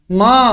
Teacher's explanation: ketika kita ucapkan ma, ada emnya dulu sedikit tuh. Itulah gunahnya.